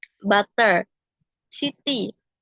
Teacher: Example, flapping in American English, T becomes R between vowels when the second vowel is unstressed.